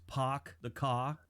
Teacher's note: say like the old jokes POC the car there's no R they kind of replace the r with an H